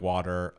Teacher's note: I say water more like water. I used a tapped rhotic for the T.